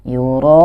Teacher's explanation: mad wajib ini wajib dibaca sepanjang 6 harokat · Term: mad wajib mutasil